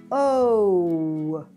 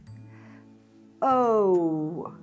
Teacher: à la fin du son, je vais en bas, O, chercher un W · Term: the long O sound